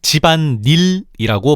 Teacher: 그래서 사이소리 즉 니은을 첨가시켜서 집안일이 아니라 집안 닐이라고 발음하는 거지